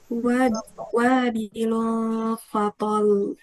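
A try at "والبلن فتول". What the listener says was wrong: Enggak ada nabarnya itu. Fatol.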